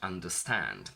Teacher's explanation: Understand has 3 syllables with the primary stress falling onto stand, so the last syllable.